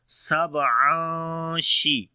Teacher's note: On the ba we make qalqala. After the tanween, the next letter is sheen. So we make the ikhfa here, which is light ikhfa.